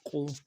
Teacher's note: قاف موٹا حرف ہے، موٹا پڑھنا ہے قاف کو، اور پیش کو پیش میں ہونٹوں گول کرنا ہے